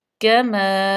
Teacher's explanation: کاف لہاتیہ میں سے، میم جو ہے حروف شفوی ہے اور الف مدہ بھی آگی کیونکہ الف سے پہلے زبر ہے،